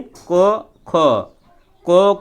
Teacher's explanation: को को बोलेंगे तो कंठ से स्वर निकलेगा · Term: कंठी ध्वनि